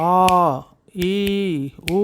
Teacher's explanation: இப்படி சிட்டிக்கு போடும்போது ஆ ஆ இ உ அப்படின்னு ஒலிக்குது. நெடில் எழுத்து 2 மாத்திரை அளவு இருக்கும்.